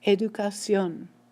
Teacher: So the stress is coming on the end of the word, and yet this word ends in an N.